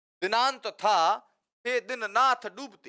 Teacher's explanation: त आ रहा है, थ आ रहा है, द आ रहा है, न आ रहा है, ये सब क्या है? ये दंत्य है।